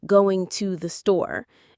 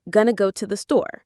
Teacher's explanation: Most of the time, you won't hear a crisp going to the store. Instead, it turns into gonna go to the store